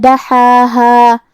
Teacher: کلمت دحاہا میں یہاں مد کا دھیان رہے. آخری میں ہم اس پر روکیں گے تو اپنی آواز 2 مد کے برابر لمبی کریں گے کیونکہ یہاں بھی مد طبیعی ہے.